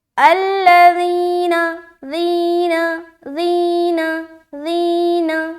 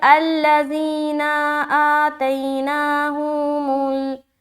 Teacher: نون کے اوپر زبر ہے، اسی لیے ہم اسے بالکل جلدی چھوڑ رہے، یعنی کہ اس کو ہم لمبا نہیں کرنا